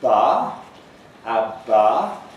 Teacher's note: you probably feel your vocal folds vibrating too, because this is a voice consonant